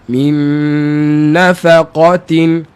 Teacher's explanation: tebalkan Kaf di samping kita jaga kiri kanan dia ada huruf nipis nipiskan dia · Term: Huruf tebal